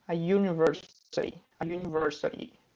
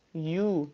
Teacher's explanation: Só que university não tem o som de uma vogal aqui, ó. You, não tem, ele tem o som de uma semivogal, que é o Y, né?